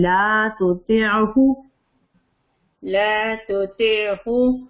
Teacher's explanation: لام کو لمبا کریں گے کیونکہ آگے مدہ ہے, الف آگے ہے